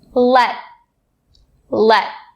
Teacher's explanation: I'm putting my mouth and tongue in all of the right positions, but then I'm not actually making a sound for the t sound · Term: stop T